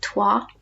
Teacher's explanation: OI in French makes a wa sound.